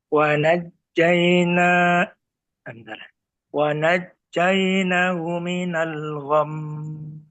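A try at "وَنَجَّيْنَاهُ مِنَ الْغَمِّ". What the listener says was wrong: Nah, naknya panjangkan, Pak. Wa najjaynahu. Nah, dan di gham ini ada mim yang bertasydid termasuk ke dalam gunnah musyaddadah. Sama seperti yang tadi nun bertasydid, maka ketika membacanya ditahan dulu. Minal gham, 2 harokat gunnah.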